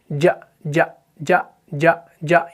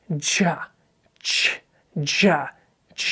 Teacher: یہ جلدی ادا ہو جاتا ہے، اس کے اندر کیا ہے؟ بلندی ہے، اور ایئر فلو کٹ ہو جاتا ہے، سانس جاری نہیں رہتا۔